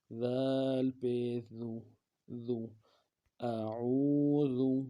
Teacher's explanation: ذال کو انتہائی نرمی سے پڑھیں گے اور پیش میں ہونٹوں کو گول کریں گے